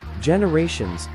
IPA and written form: ˌdʒɛnəˈreɪʃənz (generations)